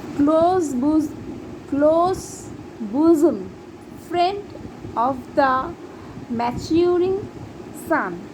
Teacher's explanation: these lines are in iambic pentameter, where unstressed syllable followed by a stressed syllable